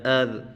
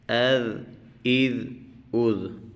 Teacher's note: جیسے سا کو ادا کرتے وقت ہم سامنے والے دو دانتوں پر زبان لگاتے ہیں، اس ذال کو پڑھتے وقت بھی ہم سامنے والے دو دانتوں پر زبان لگائیں گے